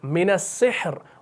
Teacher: اب ساکن سے پہلے ہا ساکن ہے اور اس سے پہلے زیر ہے تو خود بخود را کیا پڑھا جائے گا؟ باریک پڑھا جائے گا